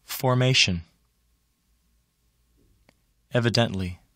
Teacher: They have primary stress on the first syllable of the suffix.